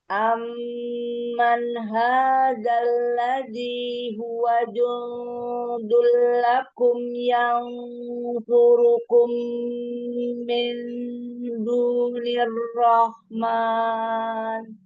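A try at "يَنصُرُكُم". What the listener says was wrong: Coba tebalkan lagi. Yang surukum tebalkan lagi sod. Amman hadzal ladzi huwa jundul lakum yang surukum. Ditebalkan angkat pangkal lidah lagi.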